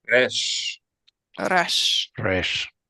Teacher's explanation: An R produced with tongue contacting upper front teeth.